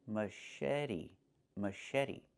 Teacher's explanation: The ch makes a soft sh sound like in fish.